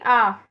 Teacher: जब जीहा और मुख विवर के ऊपरी भाग के बीच अधिक से अधिक दूरी रहती है तो विवृत ध्वनि उत्पन्न होगी